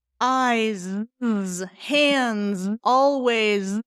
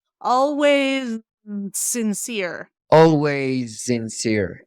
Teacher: they're both letter s's, but one is a Z sound and one is an S sound.